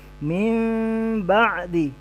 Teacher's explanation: bunyi mim tapi renggang bibir sedikit